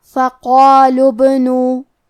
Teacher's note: نون پہ پیش ہے اور اس کے بعد واو ساکن ہے تو یہاں مد واو ہے، ہم اپنی آواز دو مد کے برابر لمبی کریں گے · فقالوا ابنو، کلمت ابنو میں یہاں با پہ جزم ہے، لہذا ہمیں با کو قلقلہ سے پڑھنا ہے، اور قلقلہ کا معنی ہے حرف ساکن کو ہلانا، تو ہم با کو ہلاتے ہوئے یہ کلمہ کو پڑھیں گے